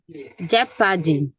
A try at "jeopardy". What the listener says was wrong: Jeopardy. Not jepa. Jeopardy. Not pa. Jeopardy.